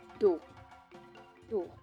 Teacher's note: Do is the lowest tone marked by a downward-facing accent. It indicates that a syllable is pronounced with a low pitch.